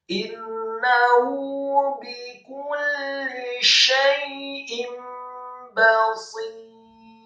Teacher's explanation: Bikul innahu bikulli syai'in basir, kata basir, baknya dibaca tipis fathah 1 harokat, kemudian shadnya dibaca tafkhim dengan posisi bibir bawah agak tertutup dan kasrah 2 harokat karena setelahnya ada ya sukun, dan rohnya di akhir ayat kita baca sukun dan dibaca tipis